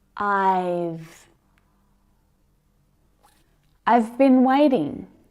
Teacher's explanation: do contract it when it's an auxiliary verb it's very natural so you hear have as just v